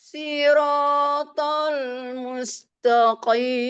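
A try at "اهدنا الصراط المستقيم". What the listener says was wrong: Dina itu terangkat harusnya itu naik. Nah ini kan ayun. Jangan diangkat. Ini kan ayun kan. Jadi naik itu yang irama berikutnya. Ihdina, nah itu terangkat itu. Awal ayun akhir datar.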